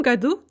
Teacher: Note that stressed u ending for the year.